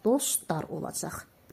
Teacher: T düşdü, l, d-ya keçdi.